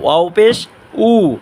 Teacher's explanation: ওয়াও দুই ঠুট গুল করিয়া উচ্চারণ করব, ওয়াও পেশ উ, এখানেও দুই ঠুট গুল করিয়া ওয়াও উচ্চারণ করব, ওয়াও পেশ উ, ইয়া পেশ ইউ।